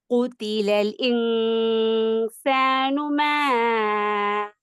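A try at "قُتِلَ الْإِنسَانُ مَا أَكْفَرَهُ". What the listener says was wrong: குதிலல் இல் என்ற சவுண்ட முழுமைப்படுத்தணும். குதிலல் இன்சானு மா அக்பர قتل ال إي قتل ال إي அந்த இல் என்ற சவுண்ட் எடுக்கணும்.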